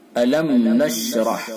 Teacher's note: الم میم ساکن ہے اور اس کے بعد نون ہے، اس کے اندر میم ساکن کا اظہار ہوگا، یعنی اظہار شفوی، اظہار میم ساکن۔